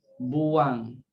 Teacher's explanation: Bila kita kata buang, seolah-olah ada wang, ada huruf yang lain keluar di situ, iaitu macam huruf W, kan? Seolah-olah kita eja BUWANG, buang, kan?